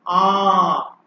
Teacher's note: খোলা মুখে দীর্ঘ আ বলতে হবে আমাদের খোলা মুখে গলা থেকে উচ্চারণ করে